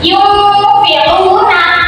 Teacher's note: Contohnya yaitu yumfiuna nah yungfiuna ini tu kayak dingung tapi huruf nun sukunnya itu dengunnya itu masuk ke dalam huruf Fa